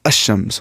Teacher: Now, if there are huruf shamsi, the lam will not be pronounced. The definite article al, its lam will not be pronounced. What happens here is that when al is prefixed to a noun beginning with a solar letter, the lam of al is assimilated to the solar letter.